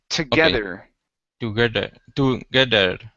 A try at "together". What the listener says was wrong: here you need to pronounce a TH. You're pronouncing a D. You're saying together. Instead of der, it's there with your tongue between your teeth. Together. Almost like the theta. place your tongue between your teeth there. Together.